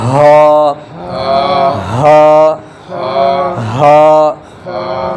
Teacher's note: அப்ப இது அடுத்து புள்ளி வச்சது ஹா ஹ ஹா ஹ ஹா ஹ இது வந்து நெஞ்சு குழில இருந்து சவுண்ட் வரும்